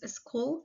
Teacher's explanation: The for example the consonant L is voice alvolar lateral and the sound comes out from the sides of the tongue